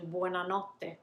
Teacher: explosion happens it happens what we do then is to um linger and to pause actually before the letter t is pronounced you you see it you hear it actually how i'm lingering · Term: double t